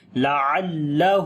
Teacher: ہا کو لمبا کریں گے، الٹا پیش ہے